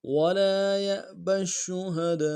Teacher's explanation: ولا میں لام کے ساتھ الف مدہ ہے، ایک مقدار میں کھینچیں گے